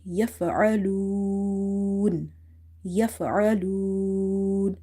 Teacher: you stretch this waw up to 3 alif, which is the best to do that